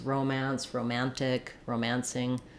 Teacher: But most likely the rules are noun and adjective, first syllable stress, verb forms, romance, romantic, romancing, stress on the man syllable